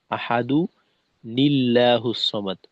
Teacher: হবে আহাদু নিল্লাহুস সামাদ তো তখন এই দালের যে তানবিন আছে তানবিন বাদ হয়ে একটা পেশ উচ্চারিত হবে আর একটা জের যুক্ত নুনকে এখানে আনা হবে